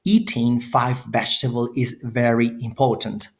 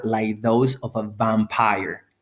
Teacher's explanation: articulated with the lower lip and upper teeth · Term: fricative